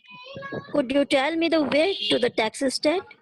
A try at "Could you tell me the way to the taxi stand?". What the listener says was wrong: नो, यहाँ पे ना राइजिंग टोन मतलब थोड़ा सा वॉइस आपका जो है वो टाइम के साथ ऊपर जाता है, आपका टोन, ठीक है।